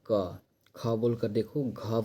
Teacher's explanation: सारे के सारे कंठ से निकल रहे हैं। · क वर्ग का जो उच्चारण स्थान है यह क्या है, कंठ है। बोलकर देखो क, देखो कंठ पे ज़्यादा जोर पड़ रही है।